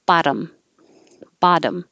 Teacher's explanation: we change the T's to a D, technically a flap, so it's just very quick.